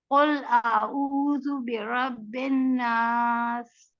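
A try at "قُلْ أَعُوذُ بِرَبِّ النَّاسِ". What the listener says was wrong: नहीं, नून पे आपने गुन्ना नहीं किया, ठीक है, गुन्ना करना चाहिए।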